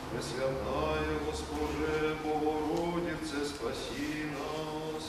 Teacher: читается несколько медленнее, при этом ударные слоги имеют большее протяжение.